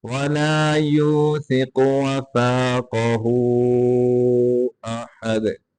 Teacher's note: काफ को मोटा करेंगे, इस काफ को भी मोटा करके पढ़ेंगे, दाल के ऊपर कलकला करके पढ़ेंगे